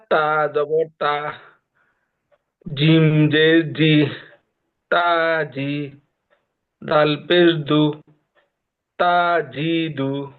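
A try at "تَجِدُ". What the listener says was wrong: দেখেন ভাইয়ার একটা জিনিস ভুল হয়েছে, তার উচ্চারণটা কি তা জবর তা একটু টান হয়ে গেছে, দ্রুত বলতে হবে তাজিদু, তাজিদু, তাজিদু, জোরে জোরে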